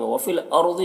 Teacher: را کو پر پڑھیں گے، ضاد کو بھی پر پڑھیں گے